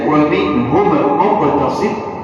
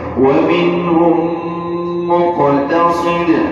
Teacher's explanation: Tapi bila kita baca wa minhum muqtasid, ada kemudahan di situ untuk gabungkan dua huruf yang sama. Yang pertama mati, yang kedua berbaris. Namanya idgham mutamathilain shaghir.